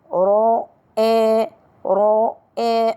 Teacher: الراء مفخمة لأنها مفتوحة. الهمزة من أقصى الحلق.